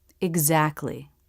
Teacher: This word has the K, T, L consonants together, but most people pronounce it without the T.